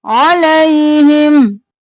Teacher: आइन गले के दरमियान से